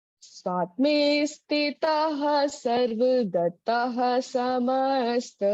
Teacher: स्वात, ये आधा ता है, इसको पूरा ता नहीं पढ़ेंगे हम